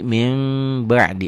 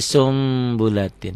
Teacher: Bunyi n-nya berubah menjadi m samar sedikit seperti Ikhfa Syafawi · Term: iqlab